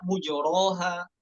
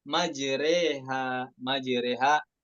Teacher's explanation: تمال فتحة الراء ما بين الفتحة والكسرة، تمال الألف التي بعدها بين الألف والياء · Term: imalah kubro